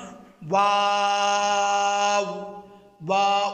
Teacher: উভয় টুটের গুল বৃত্ত করে, গুল বৃত্ত থেকে উচ্চারিত হবে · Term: হরফে শাফাবিয়া